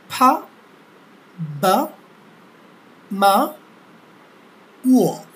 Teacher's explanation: এই চারটি ধ্বনি উচ্চারিত হয় দুই ঠোঁট থেকে, এর জন্য এদেরকে বলা হয় বাইলেবিও